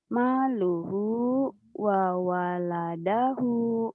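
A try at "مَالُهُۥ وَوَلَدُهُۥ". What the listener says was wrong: Wa waladuhu. waladahu bukan wa waladahu, wa waladuhu. Du, ini doma. Tapi wa waladahu bukan. Maluhu wa waladuhu. Du ini ya.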